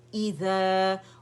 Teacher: ای کر کے مد نہیں بنانا ہے, ایزا نہیں کہیں گے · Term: حمزہ کسرہ